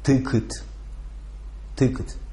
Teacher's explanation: Короткое «I», то есть «ы», и второй безударный слог редуцируется и никогда не произносится как «э».